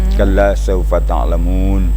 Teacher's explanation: membaca fa itu tidak boleh bibir kita terlalu dirapatkan, tapi ada renggang ada renggang sehingganya keluar hembusan atau hamas